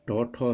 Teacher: टौ, ठौ है मूर्धन्य वर्ण, मूर्धा से इसका उच्चारण होता है, तो इसमें ये यदि आगे रहे और मूर्धन्य शौ भी रहे तो विसर्ग का परिवर्तन मूर्धन्य शौ में हो जाता है।